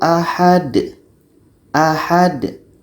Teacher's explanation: Jadi cara berhenti di sini sama seperti tadi. Huruf yang terakhir ini kita matikan dan ha ini tetap kita baca pendek. Dan di sini karena yang dimatikan ini adalah dal. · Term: qalqalah